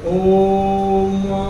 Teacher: जैसे ओम, ओ के आगे आपने 3 लिखा देखा होगा, तो वहां ओ को प्लुत करके लिखा गया है और उसकी ध्वनि ह्रस्व से 3 गुना ज्यादा लंबी खिंच जाएगी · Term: प्लुत स्वर